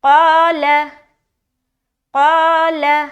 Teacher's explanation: मोटे हर्फ के साथ अलिफ आया, अलिफ मद्दा किया तो अलिफ भी मोटा निकलेगा · तो यहाँ पर हम क़ाल, अलिफ मोटा सुनाई दे रहा है कि नहीं, क़ाल, क़ाल। अब देखिए क़ा में मोटी है आवाज़, लाम में बिल्कुल बारीक हो जानी चाहिए। ऐसा ना हो कि लाम भी आपने मोटा पढ़ दिया और लाम मोटा पढ़ दिया तो गलत हो जाएगा, क्योंकि लफ्ज़ अल्लाह के अलावा बाकी हर लाम बारीक पढ़ा जाता है।